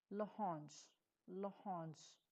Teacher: Notice how I slide the L sound right into the next word.